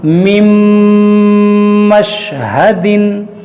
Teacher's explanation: یہاں پر دیکھیے نون ساکن کے بعد میم ہے اور میم حروف یرملون ہے, یہاں پر ادغام ہوگا, یعنی نون کو میم میں داخل کریں گے اور غنہ کریں گے